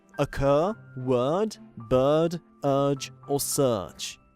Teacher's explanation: it's known as a long schwa, and in fact, many native speakers simply use an elongated schwa instead of it